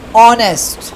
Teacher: So as you can see it is notice that these words over honest began with the voel sound and the initial consonant h is not pronounced